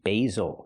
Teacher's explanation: Use the long A sound for the first syllable, like say and day, bay, basil.